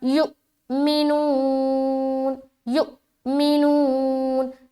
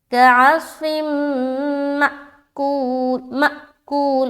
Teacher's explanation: یو میں جھٹکا دے رہے کیونکہ یہاں حمزہ ساکن بن گیا، حمزہ ساکینہ ہے نا، حمزہ کے اوپر سکون آ گیا تو بن گیا حمزہ ساکینہ.